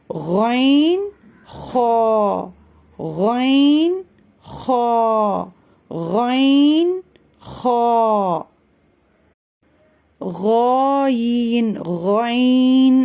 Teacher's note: அதோட கேரக்டரோட வெளிய வரும் முதல்ல இதை ஹெவி பண்ணனும் அதாவது வல்லினமா உச்சரிக்கணும் நம்மளுடைய நாவோட பின்பகுதியை தொண்டைக்கு நெருக்கமான பகுதியை உயர்த்தி இந்த எழுத்துக்களோட சத்தம் வந்து வெளிய வரும்போது ஒரு குகைக்குள்ள இருந்து வெளிவர் மாதிரி ஹெவி பண்ணி ஒரு ஸ்கிராட்ச்சோட இந்த எழுத்துக்களை உச்சரிக்கணும் · மேல் தொண்டையிலிருந்து வெளிப்படும் எழுத்துக்கள் ரெண்டு வைன் ஹா இந்த ரெண்டு எழுத்துக்களும் வல்லினமா உச்சரிக்கணும் இந்த ரெண்டு எழுத்துக்களுமே வல்லின எழுத்துக்கள் தான்